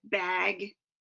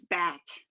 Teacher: The vowel sound changes before a velar consonant due to the tongue raising in anticipation of that consonant after it.